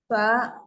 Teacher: ujung lidah bertemu dengan ujung gigi seri atas